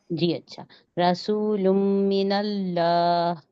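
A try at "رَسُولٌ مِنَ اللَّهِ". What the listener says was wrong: लाम मोटा नहीं हो रहा, मिनल्लाह, अल्लाह, ठीक है, इसको खूब मोटा करना है, रसूलुम मिनल्लाह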